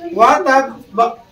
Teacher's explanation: বা সাকিন হবে, সেখানে আকার উচ্চারণ হবে না, কলকলা হবে। তাই কি ওয়াতাব্বা হালকা হবে।